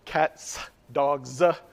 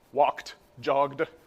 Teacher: same similarly in the English past tense walked jogged voicing assimilation the voicing of the morpheme assimilates to the voicing of the thing before